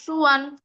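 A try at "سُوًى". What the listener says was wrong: ওয়াও জবর ওয়ান না, ওয়াও দুই জবর ওয়ান, সুওয়ান।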